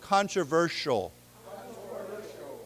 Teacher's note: Remember the S has a sh sound.